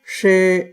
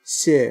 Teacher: The first she is at a high pitch and it has a long a sound. The second she is in a mid-range pitch and has a short vowel. And with she, the tongue is curled back a bit in the mouth, and with xie, it's forward.